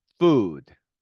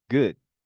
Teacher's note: 어떤 때는 우로 나고요. 어떤 때는 짧은 우로 나고요. 어떤 때는 네, 어로 납니다.